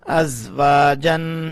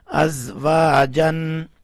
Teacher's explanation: حمزہ زا زبر از، واو الف زبر وا، از وا، جیم دو زبر جن، از وا جن. جیم کے اوپر جو دو زبریں ہیں اس میں جو نون کی آواز آ رہی ہے اس کو بھی ہم نے واضح کر کے پڑھا، یعنی یہاں بھی اخفا کو نہیں کیا، اس لیے کہ آگے حمزہ آ رہا ہے تو حمزہ حروف ہلکی میں سے ہے، اس لیے یہاں نون کو واضح کر کے پڑھا.